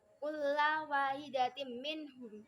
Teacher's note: itu ada tanwin bertemu dengan mim, jadi itu termasuk bacaan idgham bi gunnah